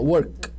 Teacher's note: Embora force a garganta, o K, mas não vibra a corda vocal. Não tem vibração.